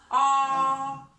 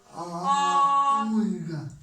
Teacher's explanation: Опускается челюсть и добавляем голоса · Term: звук А